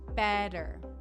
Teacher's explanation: you'll often hear it pronounced as if it were a d